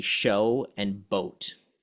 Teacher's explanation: show to boat is additive because you're adding the T sound and going from like boat to grow would be subtractive because